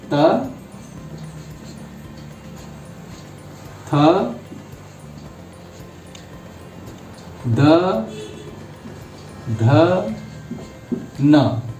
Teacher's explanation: सब में दांत का स्पर्श है, दांत से होता है।